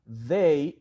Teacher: it is pronounced between your teeth. So this means that the TH sound is a dental sound.